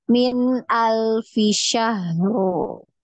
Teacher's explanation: min alfi ini bacanya jelas, ya, jangan ditahan, ya. Dia satu ketukan aja, ya.